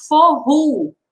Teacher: O O no final, ele tem o som de U.